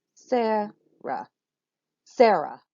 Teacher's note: So which one gets the most emphasis? It's the first syllable. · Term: Stressed, unstressed